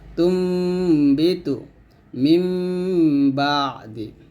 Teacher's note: নুন সাকিনের উচ্চারণের বদলে আমাকে মিম সাকিনের মত উচ্চারণ করতে হবে তবে এখানে পুরোপুরি যে মিম সাকিন হবে তাও কিন্তু না